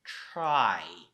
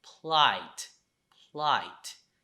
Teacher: When you pronounce R or L in plight, there's no vibration. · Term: voiceless